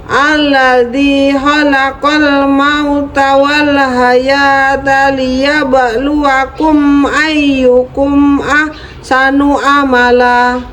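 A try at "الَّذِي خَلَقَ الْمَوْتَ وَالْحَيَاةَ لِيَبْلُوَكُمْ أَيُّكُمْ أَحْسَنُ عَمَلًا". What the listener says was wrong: Bagus. Bagus, itu benar.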